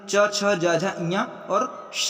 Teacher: तालव्य व्यंजन च, छ, ज, झ, ञ और श या भी तालव्य व्यंजन है।